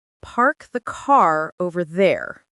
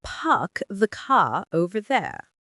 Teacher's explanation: received pronunciation >> which is non-rodic puck the ca over there the R sound just disappears and the vowel opens up.